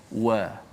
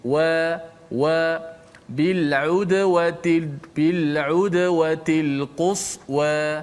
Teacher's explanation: huruf waw ni sifat dia bila kita sebut, mulut kita secara tabiat, mulut kita akan bergerak ke depan sikit.